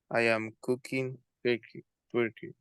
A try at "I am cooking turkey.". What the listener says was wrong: Turkey, right? All right, very good.